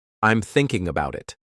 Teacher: thinking is stressed because it's the action